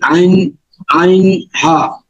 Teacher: 2 নম্বর মাখরাজ আছে হলকের মাঝখান হইতে আইন আইন হা